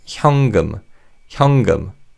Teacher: the 니은 받침 in the first syllable 현 sounds like 이응